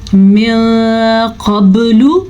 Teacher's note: من قبل، پھر سے نوٹ فرمائیں یہاں پہ اخفا کا قاعدہ ہو رہا ہے کیونکہ نون ساکن کے بعد حروف اخفا میں سے قاف آیا ہوا ہے تو ہم یہاں پہ اخفا کا قاعدہ کریں گے. من قبل، قاف ہم نے موٹی پڑھی، با کے اوپر ہم نے کلکلا کیا